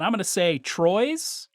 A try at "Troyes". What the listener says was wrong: almost certainly say Troyes. Not quite that. You put a little emphasis on the wrong syllable. would say Troyes is what my guess.